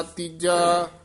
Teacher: ਤੀਜਾ ਪੋਲਾ ਨਹੀਂ ਬੋਲਣਾ ਕੱਸ ਕੇ ਬੋਲਣੇ ਹਨ ਜਿਹੜੇ ਪਦ ਹਨ ਤੀਜਾ ਚੌਥਾ ਪੰਜਵਾਂ ਦੂਜਾ ਪਹਿਲਾ